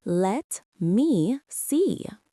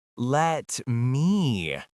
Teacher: Notice how stretched out the words. He did not say, let me see very fast. He said, let me see. He elongated the vowels.